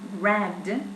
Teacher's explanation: So in this case, the first plosive is not heard, is not exploded, just the second one.